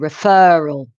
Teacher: referral with a stress on the second syllable